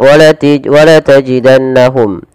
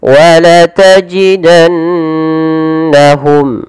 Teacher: harus dibaca dengan bacaan yang kita namakan dengan gunnah, yaitu sembari menahan memasukkannya ke rongga hidung